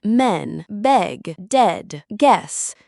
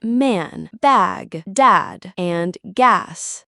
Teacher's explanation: Both are frontal lax vowels, but e is pronounced with the tongue in a low middle position and the lips relaxed. While a is a true low vowel requiring more jaw and tongue muscle as the mouth opens wider and the tongue tip touches the back of the bottom teeth. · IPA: /ɛ/